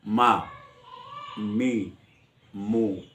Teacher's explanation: मीम में होंठों का वो हिस्सा मिलता है जो खुश्क है